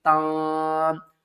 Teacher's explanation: تا کو نون سے ملائیں گے، یہاں پر ہم اخفا کریں گے، تا نون زبر تاں، نون کی آواز کو چھپا کر پڑھیں گے